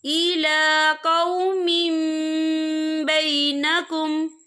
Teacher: या देखें इला कौमिम, यहाँ मीम के नीचे तनवीन है, तनवीन के बाद जो है बा आ रहा है, तो यहाँ पर इकलाब होगा यानी तब्दीली होगी। हम पिछले मीम को अगले मीम के साथ मिलाकर पढ़ेंगे और हम यहाँ गुन्ना भी करेंगे।